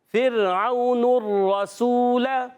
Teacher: را کو ہلانا نہیں، تکرار اصلی نہ ہو جائے. ہلکی سی زبان میں، کیونکہ زبان میں کپ کپاٹ ہوتی ہے.